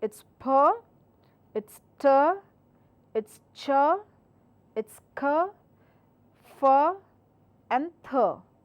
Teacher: these are your voiceless sounds and this should not be given any vibration.